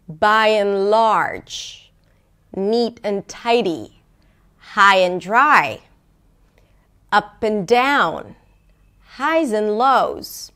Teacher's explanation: So both the rhythm here is pretty consistent, but also the intonation, right? Because you raise the pitch for the first word, you reduce the pitch for the middle word, for the connecting word, and then you raise the pitch, and it's usually a little higher by and large, right?